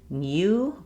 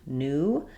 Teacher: after letters T, N, D, Z, S, a few other sounds, we have dropped this y sound. So in American English, it's not new, but rather just new.